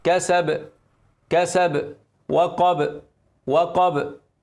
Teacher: أق أق، بتسيب المكان، بتعمل اهتزاز أو اضطراب أو خلخلة. الباء بقى من قدام الشفتين بتعمل اهتزاز أو اضطراب.